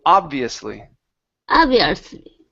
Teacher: instead of obvious o it's an ah so nice wide a